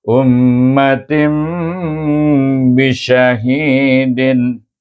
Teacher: dengan mim yang bertasdik maka kita kena baca dengan wajibun Hum panjangkan dua harakat maka dia akan berdengung